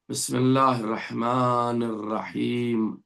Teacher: جب ان کے گم سے یعنی کہ مسوڑوں سے جا کر کے ملے گی زبان کا اگلا حصے کی نوک تو نون ادا ہوتا ہے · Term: نون کا مخرج